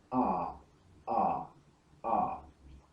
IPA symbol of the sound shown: a: